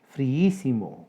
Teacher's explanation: Friísimo, 4 sílabas. Hiato entre dos vocales iguales, la I. Sucede que la sílaba tónica es la antepenúltima. Esdrújula con tilde.